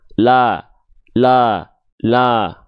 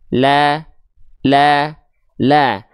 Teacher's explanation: Jadi kita analogikan tipis ini dengan analogi diksi sambil senyum ya buka mulutnya untuk menyempurnakan harakat fathah sambil senyumnya untuk menjaga kadar tipisnya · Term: huruf yang tipis